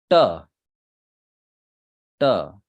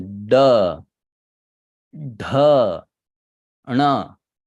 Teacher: the tongue touches the the upper palate in the middle of it